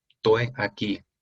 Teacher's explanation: Es muy común en la Argentina quitar la primera o última S de una palabra. Por ejemplo, en vez de decir estoy aquí, en Tucumán especialmente, se dice estoy aquí, que es una aspiración de la S en la palabra estoy.